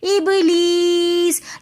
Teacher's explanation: یا مدہ کے بعد دوبارہ ساکن حرف آ رہا ہے تو اس وجہ سے ہم یہاں پر وقف کرتے وقت تھوڑا زیادہ کھینچ کر پڑھیں گے۔ · ابلیس کے اندر با حرف قلقلہ میں سے آ رہا ہے تو با کے اوپر ہم قلقلہ کریں گے، اور پھر یا مدہ ہونے کی وجہ سے ہم یا کو بھی تھوڑا سا کھینچ کر پڑھیں گے۔